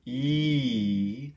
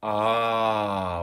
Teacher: the mouth front of the mouth back of the mouth so this is the e sound that's very high and forward ee as opposed to the ah which is very low and back